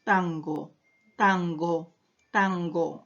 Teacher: En la palabra tango ahora es un velar, porque justamente está por debajo del velo del paladar cuando pronunciamos tango, tango, tango, ¿cierto?